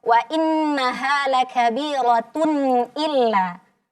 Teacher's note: izhar itu adalah sempurnakan dulu bunyi Nun sukunnya baru masuk ke huruf selepasnya